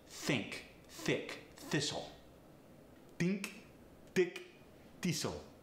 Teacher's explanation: the voiceless th gets replaced with a t